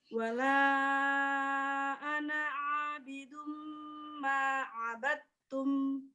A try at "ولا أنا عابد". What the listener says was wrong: بدون نطق الألف. ولا أنا عابد. الألف لا ينطق.